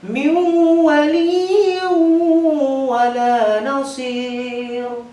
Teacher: Intinya nun matinya atau tanwinnya lebur dan memasukkan huruf idgham di gunnah dan dibaca dengan dengungan. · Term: idgham bi gunnah